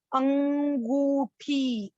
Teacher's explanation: अंगूठी, अंग जोर आ रहा है, नाक और मुंह दोनों जगह से आवाजें आ रही हैं, इसलिए आपके अनुनासिक यानी कि चंद्र बिंदु लगेगा।